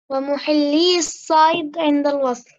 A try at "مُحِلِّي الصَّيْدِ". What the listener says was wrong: مش صحيح، حرف مد يحذف. اذا بنقول غير محلي إذا كنت بدي أوقف، ولكن إذا بدي أكمل بقول غير محلي، غير محلي الصيد. إذا تتحول ياء إلى كسر. وأيضا بالحذف.